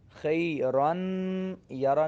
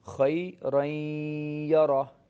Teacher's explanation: نون ساکن کی بھی آواز آئے گی، ناک میں آواز جائے گی، غنہ ہوگا یہاں پہ، اور ساتھ آپ نے یا کی آواز بھی ملانی ہے، اور یہ دونوں نون ساکن اور یا کی آواز کو مکس کر کے پڑھنا، اس کو ادغام کہا جاتا ہے.